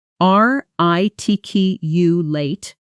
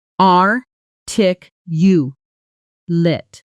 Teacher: as an adjective describing a person, some speakers slightly shorten the final syllable